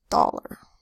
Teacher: the A softens to an unstressed vowel sound, and becomes doll, instead of doll-ar.